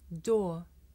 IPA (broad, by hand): dɔː